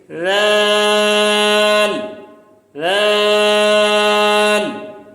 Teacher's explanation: زبان کی نوک اوپر کے دانتوں کے کناروں سے لگ رہی ہے اور تھوڑی سی باہر آ رہی ہے